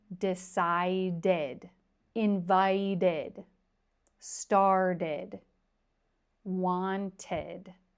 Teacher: we have 4 verbs that end in ed, and they all take the same sound, id, id. If I say it very slow, decided, invited, started, wanted.